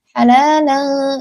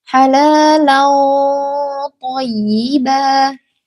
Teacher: Nah, itu kan ringan sekali. Tapi langsung masuk huruf to-nya, langsung tebal pengucapannya, langsung berat.